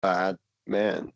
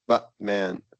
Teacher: The bad man would be longer than Batman.